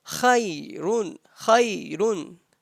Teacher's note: Ya is ya lean, not madda. You just make sound of ya and don't stretch it.